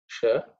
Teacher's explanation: Drish is cerebral, sh, so the tongue pointing upwards